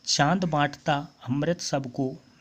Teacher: चंद्रबिंदु का जो उच्चारण है वो उसका उच्चारण नाक और मुंह के द्वारा किया जाता है, होता है। ये ध्वनियाँ अनुनासिक ध्वनियाँ कहलाती हैं, ठीक है।